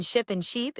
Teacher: The difference between ship and sheep is a fraction of a second and a few millimeters of tongue height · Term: tense and lax vowels